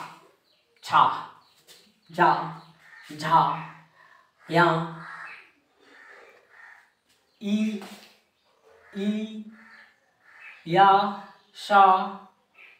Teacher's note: ये सब तालु से टकरा रहे हैं ना।